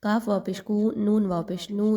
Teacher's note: دونوں واو مدہ ہیں، 1 سے 2 الف کے برابر، دونوں کی سیم لینتھ میں ادائیگی رکھیے